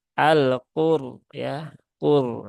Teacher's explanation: Karena di sini ro-nya berhubungan dengan dhammah maka rok sukunnya dibaca dengan tebal, al-qur ya, qur ya, dengan cara mengangkat pangkal lidah bukan al-qur tetapi al-qur ya. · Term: huruf ro yang dibaca tebal